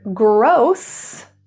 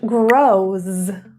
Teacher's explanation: And the difference between an S and a Z is voicing.